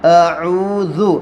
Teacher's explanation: اعوذ کے اندر واو مدہ ہو رہا، واو ساکن سے پہلے پیش ہے، تھوڑا کھینچ کر پڑھیں گے